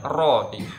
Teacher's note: kadar takrirnya hanya 2 kali getaran, atau dia menyebut maksimal 3 kali getaran ya. · Takrir itu bergetarnya ujung lidah.